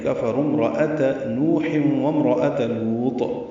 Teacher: نوح میں نو واو مدہ ہے، دو حلقات لمبا ہے. ہا وسط حلق سے ادا ہوگا، تنوین کے بعد واو آنے کی وجہ سے ادغام ہے.